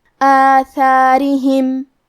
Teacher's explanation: سے کی ادائیگی زبان کے سر اور اوپر والے دانتوں کے اندرونی کناروں سے ہے، کیونکہ را کے نیچے زیر ہے، لہذا یہاں را کا حکم ہے ترقیق، ہم حرف الرا کو پتلی آواز میں پڑھیں گے